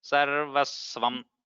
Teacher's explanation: So the sva is samyukta akshara. So a slight stress.